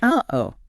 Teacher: The whole meaning of the expression relies on that sharp division of the two vowels. Uh-oh. And that feeling of your throat catching, that tightness right in the middle, that is your vocal cords slamming shut. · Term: glottal stop